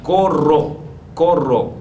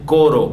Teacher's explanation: El fonema vibrante múltiple de corro, corro con dos R, no es coro con una